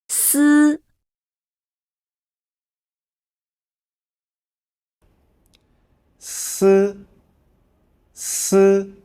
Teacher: When pronouncing, the tip of the tongue approaches the back of the upper front teeth, leaving a narrow gap. The airflow is squeezed out from the narrow gap at the tip of the tongue, creating sound through friction.